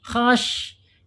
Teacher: Shin ada di al-lisan ya, al-lisan yaitu punggung lidah, tengahnya ya, tengah punggung lidah. Ini akan terangkat ya, tetapi tidak menekan seperti isti'la dan tidak terangkat keseluruhan ya.